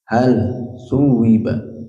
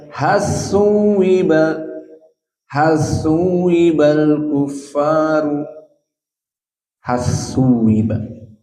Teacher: Walakin qira'ah hamzah zayyad udghima lam ila sa